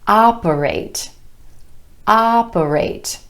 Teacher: 3 syllables with emphasis on the first syllable and the vowel sound ah